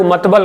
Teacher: उसका बहुत बार उच्चारण लोग मतबल करते हैं, ठीक है, ल की जगह ब बोलते हैं